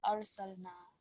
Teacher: من يشاء وهو العزيز الحكيم ولقد أرسلنا موسى So again, ra and lam sakin, they just need to be completely mute. Arsalna.